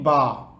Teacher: বা উচ্চারণ হয় হচ্ছে নিচের ঠোঁটের ভেতরের অংশ থেকে · 16 নাম্বার মাখরাজ দুই ঠোঁট এখান থেকে উচ্চারিত হয় তিনটি হরফ